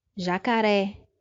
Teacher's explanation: a sílaba forte é a última, é oxítona e termina em vogal, no caso a letra E.